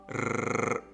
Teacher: The R is a little difficult for English speakers because it is actually rolled. As in Italians, I can roll my R, so I can say rrr.